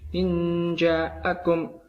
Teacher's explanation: Langsung ke contoh, yaitu saya ambil jim, dibacanya secara samar antara jelas dan dengung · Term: ikhfa